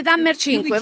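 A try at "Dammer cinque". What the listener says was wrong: Dammer un po' più, Dammer 5, R, se te senti l'R,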